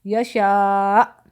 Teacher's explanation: اگر ہم اس پر وقف کریں گے تو ہم آخر میں جھٹکا دیں گے، یشاء، ٹھیک ہے، کیونکہ حمزہ جو ہے ساکن ہو جائے گا، پھر نبر جھٹکا دے کے پھر ہم رکیں گے۔